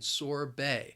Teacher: it has two syllables and the stress is on that second syllable